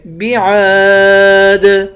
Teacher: دال حروف قلقلہ ہے، یہاں پر قلقلہ کریں گے